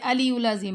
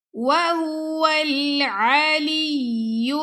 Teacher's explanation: لام کو یا سے ملائیں گے پھر یا کو نیکسٹ لام سے